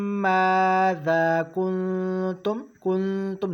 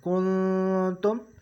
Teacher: نرم غنے کے ساتھ، یعنی ناک میں آواز لے کے جائیں گے اور غنہ کریں گے نرم غنے کے ساتھ، کنتم۔ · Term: اخفا